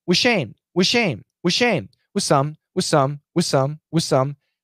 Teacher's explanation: the th can disappear it can be cancelled because of the s sound the s is a strong sound and it can kill it